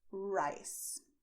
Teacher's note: for rice in English, as you know, you will bend your tongue backwards to make rice. But this movement is not what you do with your tongue in Spanish.